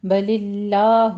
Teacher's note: بل اللہ میں لفظ جلالہ کو باریک پڑھنا ہے